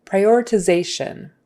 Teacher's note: notice the syllable stress is on Zay that next to the last syllable